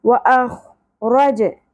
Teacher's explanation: جیم ساکن پہ قلقلہ ہوگا